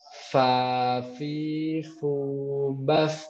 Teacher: Gigi seri atas ketemu punggung bibir bawah kita.